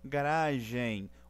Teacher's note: Garagem, o som do M fazendo o som de Y aqui no final, semivogal, e ainda fazendo o som de nasal sobre o E, fazendo um tio sobre o E.